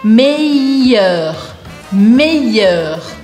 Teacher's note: Eu quero que você esqueça que tem um L aqui no meio e que você pronuncie como se fosse um I.